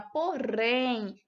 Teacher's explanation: a nossa linguinha treme né quando a gente fala palavrinha porém